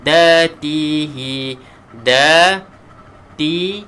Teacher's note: Da dengan ta ini berada di belakang gigi depan. Sebelah atas ni, gigi atas kita ni, huruf dal dan huruf ta berada di belakang gigi.